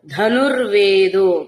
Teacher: ధనుర్వేదోలో ఉన్న దకారం అల్పప్రాణమే అది మహాప్రాణంగా పలకద్దు